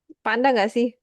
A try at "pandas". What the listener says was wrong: Pandas ya, ada S-nya. Pandas.